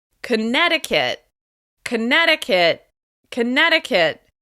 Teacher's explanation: As you can hear, Connecticut is stressed on the second syllable.